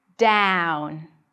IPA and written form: dæʊn (down)